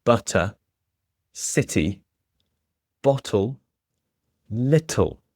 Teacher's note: So you can definitely hear those crisp T's in the middle of the words. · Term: clear T